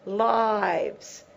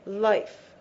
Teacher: These two are pronounced exactly the same in an unvoiced manner. The difference between these words from a pronunciation point of view is in the length of the vowel and in the quality. This is open, lives.